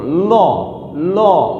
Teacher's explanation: এই ল উচ্চারণ করতে গিয়ে আমরা যখন ল উচ্চারণ করি তখন জিভ সামনের দিকে এসে পথ রোধ করে দেয় এবং বাতাস দুই পাশ দিয়ে বের হয়, কারণ তার নাম হচ্ছে পার্শ্বিক ধ্বনি।